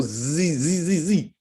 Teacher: you can hear the rumbling of the epiglottis that's what you're hearing in the back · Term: z sounds